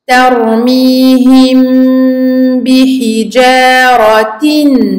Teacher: Donc on parle ici, je répète, d'un irfa shafawi. Donc on ferme les lèvres pour le mim et on les réouvre pour le ba.